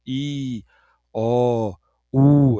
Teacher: Você só vai mudando ali um pouquinho do formato da boca, né? A boca mais aberta vai fechando, fechando, fechando até chegar no U